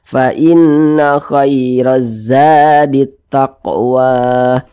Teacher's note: Gunnah musyaddadah cara bacanya itu digunnahkan atau didengungkan. Jadi suaranya itu kita panjangkan, kita tahan, kita panjangkan sejenak.